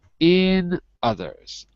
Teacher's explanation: it really drops down on the last syllable